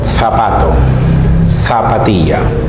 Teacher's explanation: puedo entender que la lengua está entre los dientes no forzando sino aproximándose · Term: sonido interdental